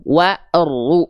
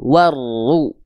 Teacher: Jadi langsung diidgomkan, dimasukkan, dileburkan ke huruf ro.